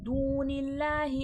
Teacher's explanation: अल्लाह लफ्ज़ से पहले ज़ेर है, सीधा पढ़ा जाएगा, मोटा नहीं किया जाएगा।